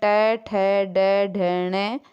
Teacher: जब हम बोलते हैं तो जीभ जो है हमारे दांतों के पीछे के जो खुरदुरे भाग है वहाँ से टकराती है, वहाँ से स्पर्श होती है। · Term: मूर्धन्य